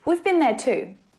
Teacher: in past participle form, the vowel sound is often shortened to been